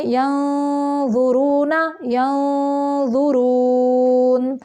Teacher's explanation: نون ساکن کے بعد ضو آ گیا ہے ادھر بھی اخفا ہے